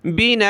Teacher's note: زبر کی تنوین میں ہم نے وقف کیا ہے، رکے ہیں تو وہاں لاسٹ میں الف کے ساتھ رکیں گے